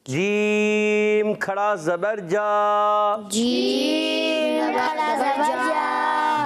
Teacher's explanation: یہ غلط ہو جاتا ہے تو آپ نے دانت نہیں ملانا وسط زبان وسط تالو یعنی زبان کا درمیان تالو کے درمیان سے جیم ادا ہوتا ہے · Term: جیم کی ادائیگی